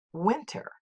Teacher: it consists of two syllables the first accented and the second unaccented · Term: trochaic